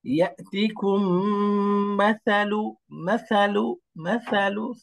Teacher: সাটা নরম, জিহ্বার আগা উপরের দাঁতের আগা।